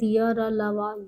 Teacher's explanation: इनका उच्चारण जीभ, तालु, दांत और ओठों के परस्पर सटाने से भी होता है, किंतु कहीं पूर्ण स्पर्श नहीं होता है। अतः ये चारों अंतस्थ व्यंजन अर्धस्वर कहलाते हैं।